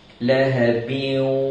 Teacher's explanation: Tanwin tu dimasuk dalam waw dan perlu dengung dengan kadar 2 harakat. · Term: idgham ma'al gunnah